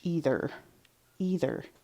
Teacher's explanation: my tongue touch the top teeth in the middle of that word